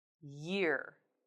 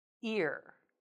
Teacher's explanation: the word year will sound like ear if the back of your tongue doesn't rise high enough. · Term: y sound